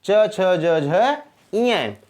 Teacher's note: तो आपका स्पर्श संघर्षी व्यंजन च, छ, ज और झ, स्पर्श संघर्षी व्यंजन आपके 4 माने जाते हैं